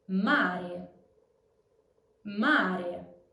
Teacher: All non-stressed E's are closed in Italian, so they sound like the E in veil. For example, in the word mare, the stress is on the A, so you can be sure that the E is closed.